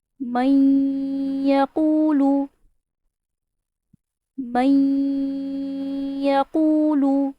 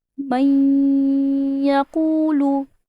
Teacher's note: ادغام کا مطلب ہے ملانا، ہم نے من اینڈ یقول کو ملایا ہے۔ با غنہ کا مطلب ہے غنہ کے ساتھ، ہم نے دونوں کو ملا کے غنہ بھی کیا ہے